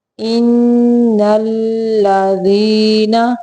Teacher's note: ان پہ نون مشدد کا غنہ ہوگا